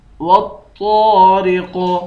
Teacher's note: طا کو موٹا پڑھیں گے، قاف کو بھی موٹا پڑھیں گے، اور قاف حروف قلقلہ میں سے بھی ہے اور موٹے حروف میں سے بھی ہے، اس کو قلقلہ کر کے بھی پڑھیں گے اور موٹا بھی پڑھیں گے۔